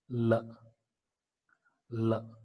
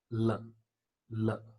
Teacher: So L is a voiced alveolar lateral consonant sound. Actually, this lateral consonant is one in which the passage of air through the mouth does not go in usual way.